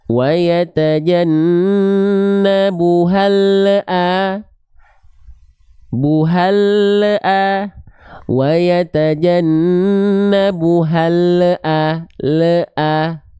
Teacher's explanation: ketika kita melafalkan huruf lam dalam kondisi sukun, ya, lidah kita keburu turun duluan. Lidah kita makhraj lamnya keburu lepas dari langit-langit. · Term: memantul